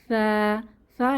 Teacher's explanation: সা একটা soft letter বা নরম হরফ সা এর উচ্চারণের স্থান জিহবার আগা সামনের উপরের দুই দাঁতের আগার সঙ্গে লাগিয়ে নরম আওয়াজে আমরা এভাবেও লিখে রাখতে পারি জিহবার আগা দাঁতের আগা নরম আওয়াজ